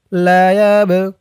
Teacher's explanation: ওয়াও সাকিন আমানু লা ইয়াব লা ইয়াব ইয়া দিয়ে বা ধরবে এই বাটা কলকলার হরফ ধাক্কা দিয়ে পড়তে হবে